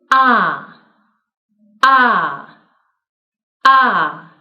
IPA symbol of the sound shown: ɑ: